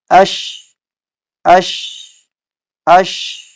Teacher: زبان کے درمیان کو ہم نے اوپر کے تالو سے تھوڑا سا گیپ رکھنا ہے، ایک باریک سا گیپ، جس کی وجہ سے آواز اور ہوا دونوں اندر سما سکیں، ٹھیک ہے۔ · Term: شین